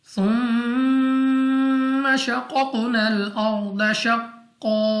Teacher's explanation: اب یہاں پہ ہمارے پاس میم مشدد غنہ کر کے پڑھیں گے، قاف مستعلیہ موٹا پڑھیں گے، دوسرا قاف مستعلیہ بھی ہے اور قلقلہ بھی ہے تو موٹا بھی پڑھیں گے، اور واپس لوٹتی ہوئی آواز کے ساتھ پڑھیں گے. الف سے پہلے زبر الف مدہ، لیکن الف مدہ نہیں ہے کیونکہ نون لام کے ساتھ مل رہا ہے تو ملا دیں گے.